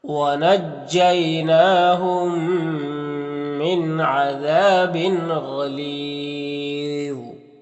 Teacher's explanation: غین اور ضا دونوں حروف مستعلیہ میں سے پر پڑھیں گے · یہاں پر میم ساکن کے بعد میم ہے تو ادغام ناقص ادغام شفوی ہوگا، غنہ کے ساتھ پڑھیں گے. یہاں پر نون ساکن کے بعد عین ہے تو اظہار حقیقی ہوگا. یہاں پر الف مدہ ہے، ایک الف کو برابر کھینچیں گے.